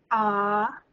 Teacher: ah what the doctor has you say so they can look down your throat where your tongue moves down very low